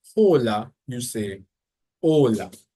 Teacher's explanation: the H in Spanish is actually silent. Every time you see a H, you never actually pronounce it. It's always silent.